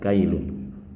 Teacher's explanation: sebelum dipertemukan dengan ya tasdid berbunyi kailun berakhiran bunyi n yang jelas kailun. Setelah dipertemukan dengannya tasdid cara pembacaannya berubah menjadi kailu ya.